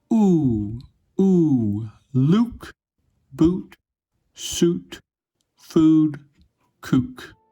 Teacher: It feels like the vowel in the Chinese wu is produced further back. It’s pronounced with your lips very rounded. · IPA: /u/